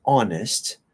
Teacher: there are exceptions like honest we don't pronounce the h